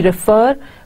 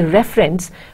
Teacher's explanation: Now see how refer and reference are different. Now you see refer by putting more accentuated stress on the fur sound in the middle, but you say reference while putting more stress on this initial r sound